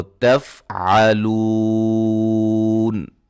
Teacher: اس پہ جب ہم وقف کریں گے تو تفعلون، لو کو میں نے 3 سے 4 الف کے برابر لمبا کر کے پڑھا ہے اور وقف کیا ہے۔ تفعلون، تفعلون، ایسے بھی پڑھ سکتے ہیں 1 الف کے برابر بھی، ٹھیک ہے جی، یعنی کہ اختیار ہے اس میں ہمیں۔